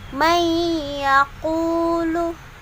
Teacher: Jika nun atau tanwin bertemu 4 huruf idgham, yaitu ya, nun, mim, dan waw, maka wajib didengungkan, sambil didengungkan. Contoh, nun bertemu dengan ya, dan dengungnya itu dipanjangkan selama 2 harokat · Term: idgham biguna